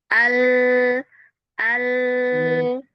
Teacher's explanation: Huruf lam itu dia dari ujung lidah ya. dari ujung lidah dan tepian lidah itu bersentuhan dengan gusi atas yang dekat banget sama sama tumbuhnya gigi